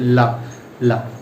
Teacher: ला जब हम ला बोलते हैं तो जीभ हमें ऊपर टकराती है और हवा दोनों ओर से बाहर निकल जाती है, उसे बोलते हैं पार्श्विक।